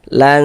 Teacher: Jadi bunyi nun sukun itu dibaca samar dengan kita bersiap-siap masuk ke dalam huruf ikhfanya. Jadi dia tuh di tengah-tengah antara sifat izhar dan juga sifat idgham kayak gitu. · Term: ikhfa hakiki